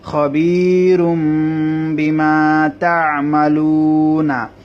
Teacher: এই তানবিনটাকে মিম পড়া হবে, যেহেতু তানবিনের পরে বা এসেছে। খবীরুম বিমা তা'মালুনা।